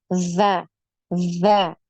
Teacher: ujung lidah kita ini nempel di gigi seri atas jadi suaranya enggak tajam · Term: tidak tajam